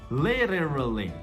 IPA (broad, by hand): ˈlɪt̬.ɚ.əl.i